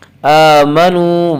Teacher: واو مدہ کو ایک الف کے برابر کھینچ کر پڑھیں گے